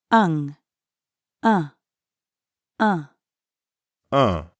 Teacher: the first one, un, is nasal. It's a little like the sound in the English word sung, but you send air through your mouth and nose at the same time.